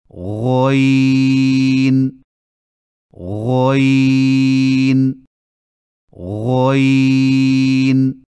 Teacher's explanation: غین کی ادائیگی میں خرخراہٹ کی آواز پیدا نہ ہو